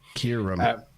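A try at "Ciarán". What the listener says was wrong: The vowel longer, so it's Kieran.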